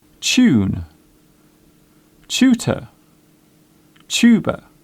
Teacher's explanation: The first part of the word sounds like chair. It is common in British English to pronounce the TU sound as ch.